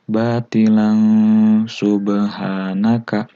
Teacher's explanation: Ini adalah mad iwad jika kita berhenti di sini. Tapi kalau dilanjutkan, ini tanwin bertemu dengan sin, maka dibacanya adalah ikhfa alias samar. Sub dan ikhfa pun sama, harus dibaca 2-3 harokat.